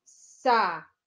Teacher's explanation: O bi é a sílaba mais forte, a sílaba tônica.